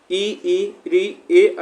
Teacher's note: इ ऋ ए ऐ जो होते हैं यह हमारे अग्र स्वर से उच्चारण होते हैं।